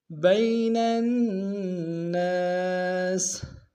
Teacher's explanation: با کو یا کے سامنے لیں گے، یا لین بغیر کھینچے پڑیں گے